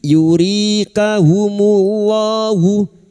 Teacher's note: yuri kasrah bertemu ya sukun 2 harakat matabi'i